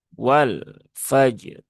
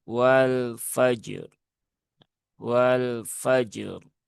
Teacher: Karena lam dia tidak punya sifat syiddah ya. Lam sifatnya adalah tawasut. maka dia di pertengahan ya, tidak mengalir dan tidak tertahan. Kemudian huruf fa dia tipis ya.